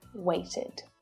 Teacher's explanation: ED can be pronounced as id. So this is an unstressed vowel sound, and it creates an extra syllable which is always unstressed. So the sound is short and it's low in pitch.